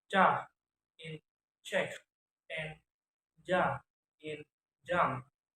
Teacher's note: Third, abrogatives are made by blocking the airstream briefly with the tongue in the mouth. The blocked airstream is slowly released and causes audible friction